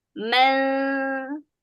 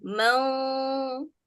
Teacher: Mang itu bunyi dengung tebal